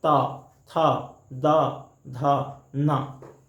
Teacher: आप उच्चारण कर से देखें त, थ, द, ध, न। दांत और जीभ की टकराहट होती है, तो दांत से टकरा रही है जीभ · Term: दंत्य व्यंजन